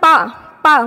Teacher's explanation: हमारे जो दोनों ओठ है वो एक दूसरे को टच करते हैं